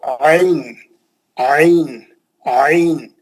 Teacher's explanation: بالکل حلق کے بیچ میں سے آواز آنا